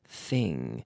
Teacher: The sound is in my mouth, not in my vocal cords. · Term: TH sound